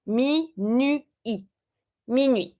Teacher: we don't pronounce the T, but we do pronounce the two vowels.